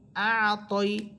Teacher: হামসা আইন জবর আ, তয়া জবর তই, আ তই। ত এটা মোটা হরফ, আর মোটা হরফ কারের উচ্চারণ ছাড়া পড়তে হয়, আকারের উচ্চারণ ছাড়া